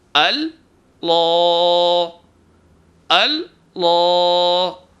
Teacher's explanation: تو ایک بات یہ ہے کہ لفظ اللہ کے الف کو بھاری نہیں کرنا ہے، لام کو بھاری کرنا ہے۔ لام کے اوپر آواز کو ٹھہرانا نہیں ہے، ایک دم ادا کرنا ہے، شدت سے ادا کرنا ہے، الف کے برابر کھینچنا ہے، غنہ یہاں نہیں کرنا ہے، زبان میں لرزش نہیں لانی ہے۔